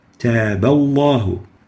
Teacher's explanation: the letter ba has a fatha, so the lam has to be velarized with tafkheem.